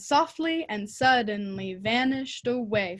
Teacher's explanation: it keeps you waiting through the entire metric foot to get to that final stressed syllable so it does really keep you kind of like hanging on